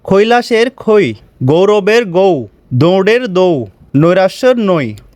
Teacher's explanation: যখন দুটি স্বরধ্বনি একসঙ্গে উচ্চারিত হয়ে একটি মাত্র অক্ষর বা ধ্বনির মতো শোনা যায় তখন তাকে দ্বিসরধ্বনি বলা হয়। এতে জিহ্বা এক স্থান থেকে অন্য স্থানে সরে গিয়ে দুটি স্বরধ্বনির মিলিত ধ্বনি সৃষ্টি করে।